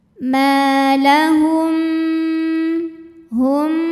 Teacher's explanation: yang dinamakan dengan Ikhfa Syafawi sebab mim sukun menghadapi huruf ba cara membacanya bunyi mim sukun ini didengungkan ditahan